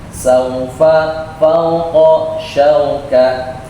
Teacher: Au bacanya lembut. Bacanya dengan u. Au, bukan o, bukan au.